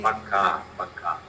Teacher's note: So, the stress placement on the last syllable.